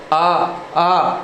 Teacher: ऐसा लगेगा जोर आपके जिह्वा के पीछे के भाग पर है, आगे के भाग पर नहीं है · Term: पश्च स्वर